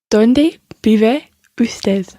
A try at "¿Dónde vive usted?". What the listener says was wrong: Muy bien.